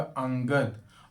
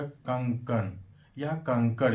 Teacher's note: यह स्वर के बाद आने वाला वह व्यंजन है जिसकी ध्वनि नाक से होती है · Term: अनुस्वार